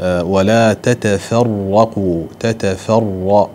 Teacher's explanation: الراء هنا مفتوحة، ما دام أنها مفتوحة فإذا حقها التفخيم، وفخمان لا نقول تتفرق يعني يسهل أحيانا الترقيق، لا ولا تتفرق، لا بد أن نرفع اللسان في النطق بالراء لأن حينئذ تكون الراء مفخمة وقد وردت مرتين.